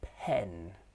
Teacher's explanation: The jaws are in the middle. They are half open, half close. The tongue is at the front and the lips are unround